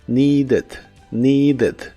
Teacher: La primera parte es igual que en el presente, con la i larga o doble, y la ed que se le agrega al final se pronuncia como ed, con la e muy suave